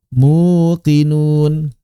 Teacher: Tapi berat bagi orang-orang Arab mengucapkan domah bertemu ya sehingga ya-nya tidak diucapkan konsonan melainkan diubah menjadi huruf vokal yang sesuai dengan harokat domah